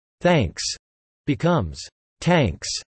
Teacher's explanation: Unvoiced th becomes t, e.g. thanks becomes tanks.